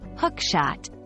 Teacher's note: it's important to understand the stress in hook shot the emphasis is usually on the word hook